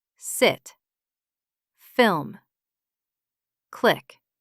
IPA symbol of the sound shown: ɪ